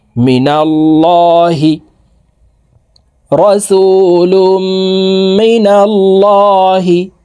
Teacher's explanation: আল্লাহ শব্দের আগের হরফে জবর আছে এই কারণে এই লামকে ল অর্থাৎ মোটা করিয়া পড়তে হবে